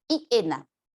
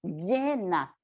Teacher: su sonido nunca será estrictamente vocálico, sino que adquiere un sonido un poco más parecido a la consonante y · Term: semiconsonante